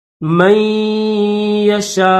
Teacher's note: میم کو جو ہے یا کے ساتھ ملائیں گے، لیکن یہاں پر غنہ کر کے پھر ملائیں گے ، من یشاء، اور یہ حمزہ ہے، حمزہ کے اوپر پیش